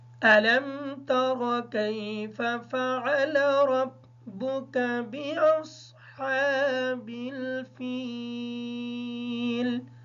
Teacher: ترى كيف کی جو را ہے اس کو پر پڑھیں گے اس وجہ سے کہ اس کے اوپر زبر ہے۔ اس کاف کو باریک پڑھیں گے کیونکہ یہ کش والا کاف ہے۔